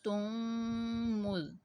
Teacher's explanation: ادغام شفوی کی تعریف: میم ساکن کے بعد دوسری میم آ جائے تو میم ساکن میں ادغام شفوی ہوگا، یعنی غنہ کریں گے